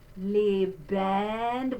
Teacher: we have a closed E followed by an open E